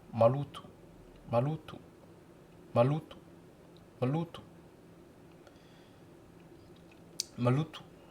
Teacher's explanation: le lo s'entend plus fortement que ma et le to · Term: accent tonique